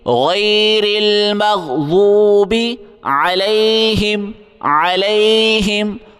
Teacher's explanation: غیر را کو باریک پڑھیں گے